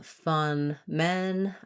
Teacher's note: the schwa vowel like in some or fun which is a little bit more flat more central vowel